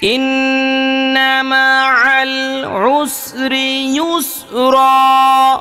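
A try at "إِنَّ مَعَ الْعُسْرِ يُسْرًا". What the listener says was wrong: এই রিয়ের মধ্যে টান হয়ে গেছে আপনার। ইন্না মাআল উসরি ইউসরা।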